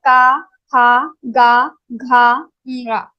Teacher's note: This kantha, all the ka group varnas will be pronounced from kantha.